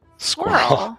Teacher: how Americans pronounce squirrel squirrel's one syllable